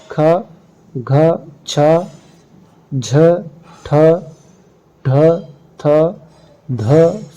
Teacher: अल्प प्राण अक्षरों की अपेक्षा महाप्राण में प्राण वायु का उपयोग अधिक श्रम पूर्वक करना पड़ता